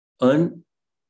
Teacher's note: So you are not stressing un or the, but you are stressing the last syllable, that is stand.